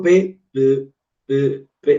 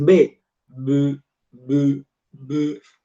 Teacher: Si yo digo P, P, P, P, me pongo la mano en la laringe y siento que la cuerda no vibra, pero voy a decir B, B, B, B. Cuando pronuncio la B, sí observo que las cuerdas vocales sí van a vibrar.